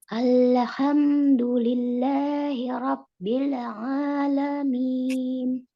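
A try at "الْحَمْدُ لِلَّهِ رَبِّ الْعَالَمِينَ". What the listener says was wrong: Jangan terburu-buru di hamnya juga jangan terburu-buru. Kita berikan haknya dia untuk dia mengalir sedikit ya. Tidak terlalu banyak tapi mengalir sedikit.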